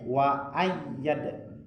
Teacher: huruf ya itu ada tasydid ya, ditekan dulu